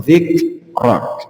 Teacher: kaf itu bukan termasuk qalqalah, jadi cukup ditahan saja. Laka dzikrak, bukan dzikrok.